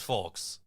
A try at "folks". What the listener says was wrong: Also, don't pronounce the L in folks.